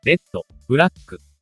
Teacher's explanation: Mapapansin natin ang pause bago ang huling pantig. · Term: geminated sound